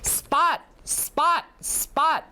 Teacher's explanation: when you have the unaspirated p it usually occurs after an s